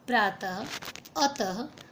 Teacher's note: विसर्ग चिन्ह वाले शब्दों को बोलते समय ह की हल्की सी आवाज़ आती है। विसर्ग में ह जो है उच्चारण करते समय उसकी आवाज़ भी थोड़ी सी निकलती है।